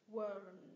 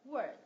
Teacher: mình sẽ cong lưỡi âm L lên và kết thúc vào âm d này